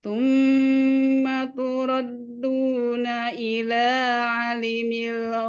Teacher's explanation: Hati-hati fathah bertemu alif 2 harokat dari ila.